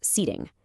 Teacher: A British speaker might say setting with a really sharp t. But an American speaker will often soften that t into a d sound. It's called a flap t.